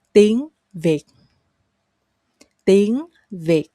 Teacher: Remember to go up and then go down very abruptly.